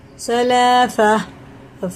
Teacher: سا ہلکا ہوتا ہے، اس میں سین کی آواز نہیں آئے